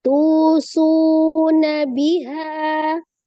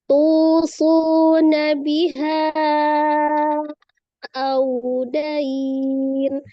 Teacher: Bertemu dengan huruf hamzah di beda kata biha dengan au, itu kan katanya terpisah. Maka kalau dia beda kata namanya mad jaiz munfasil ya, panjangnya 4 atau 5 harakat.